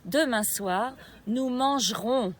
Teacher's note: we don't mark the intonation on the syllable GE in MAN-GE-RONS